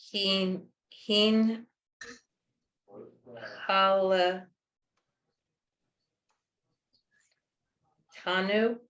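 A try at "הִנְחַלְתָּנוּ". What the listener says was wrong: Hin, chal, tanu. Hin, chal. So you combine the nun with the hey, is one syllable. Hin, chal, tanu. So the first 2 letters are a syllable, the second 2 letters are a syllable, the third's by itself, and then the fourth is by itself. Hin, chal, tanu.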